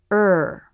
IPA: ɹ